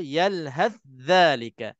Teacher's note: Okey, kedua-dua huruf ni kena keluar lidah. Tha keluar lidah, dza keluar lidah.